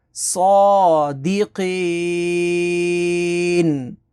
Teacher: اب وقف کے بعد میں نے تھوڑا سا لمبا کیا کیونکہ یہ آیت مکمل ہو رہی ہے، یہ گول دائرہ وقف تام ہے، تو وقف کی وجہ سے نون کو ساکن کر دیا، اس کی زبر کے اوپر یہ جزم آ گئی، یعنی یہاں پر یہ جزم لگ جائے گی، یہ زبر ختم ہو جائے گی، تو یہ ساکن ہو گیا وقف کی وجہ سے۔ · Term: مد عارض